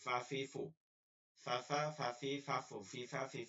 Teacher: ফা হচ্ছে উপরে দুই দাত নিচের ঠোটের পেট